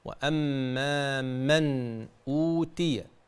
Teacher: نون ساكنة أتى بعدها همزة الحكم إظهار حلقي